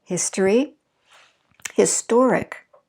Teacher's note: we shift our stress from the first syllable to the second syllable once we add the IC. Notice that we still have the same amount of syllables, history, historic.